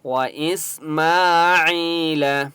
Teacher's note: میم کے اوپر کھڑا زبر ہے، ایک الف کی مقدار کھینچ کر پڑھیں گے۔ یا مدہ ہے، عین کو ایک الف کی مقدار کھینچ کر پڑھیں گے، اور عین کی آواز بریک حلق سے نکالیں گے۔